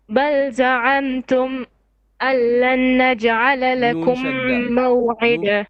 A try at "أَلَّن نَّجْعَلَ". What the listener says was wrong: نون شد. ألن نجعل.